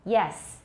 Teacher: it's not either it's a slightly lower e or it's a very high ah